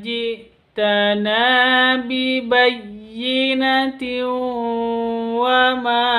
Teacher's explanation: tanwin bertemu dengan wawu mad idgham bi gunnah Panjangnya 3 ketuk atau 2 ketuk, dibaca dengung.